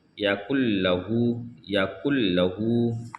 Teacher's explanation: نون کو چھوڑ دیا جائے گا، لام سے ملا کر پڑھیں گے کاف کو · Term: تشدید